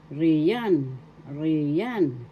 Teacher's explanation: The accent is in the second syllable